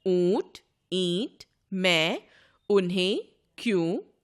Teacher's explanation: जब हम स्वरों का उच्चारण मुख के साथ नासिका से भी करते हैं तो वह स्वर अनुनासिक हो जाता है